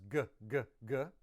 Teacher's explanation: if you add vocal cords to that kappa, becomes g. That's voiced.